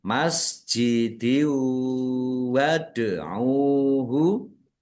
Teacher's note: masuk dengan mendengung yaitu mendengung wau. Biar mendengung ditahan. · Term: idgham bi gunnah